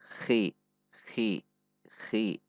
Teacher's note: Dibaca tidak dengan mengorok yang terlalu banyak, khi, namun biasa saja, khi.